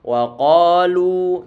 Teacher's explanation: ini lu dia pengucapannya dengan cara kita monyongkan bibir kita karena lam dalam keadaan dhammah. Wa qalu, lu dipanjangkan dengan kadar 2 harokat.